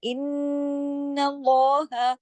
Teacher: अल्लाह के नाम में लाम को हैवी करेंगे · नून पे तशदीद होगी, काफी बड़ा गुन्ना होगा, अकमल